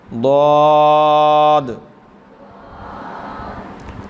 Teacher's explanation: اس کے بعد آ گیا ضاد، حرف حافیہ. زبان کی کروٹ اور اوپر کی داڑھوں کی جڑ سے ادا ہوتا ہے. یہ کافی مشکل ہے، اس کو بعض ضاد پڑھ جاتے ہیں، تو یہ ضاد نہیں ہے، ضاد، ضاد.